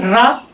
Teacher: जब आप रा का उच्चारण करते हैं तो जिह्वा हल्का ऊपर उठ जाती है, यानी मुड़ जाती है, बेलनाकार हो जाती है। ठीक है, उनमें लुंठन आ जाता है, मोड़ आ जाता है, इसीलिए रा को लुंठित वर्ण भी माना जाता है, कहा जाता है। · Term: प्रकंपित वर्ण